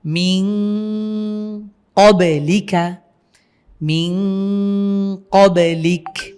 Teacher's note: আমরা সেই নুন সাকিন অথবা তানভীন কে নাকের ভেতরে গুন্না করে পড়বো